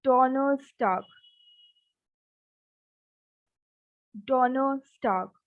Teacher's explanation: So I am not saying it r. I'm not taking the r sound.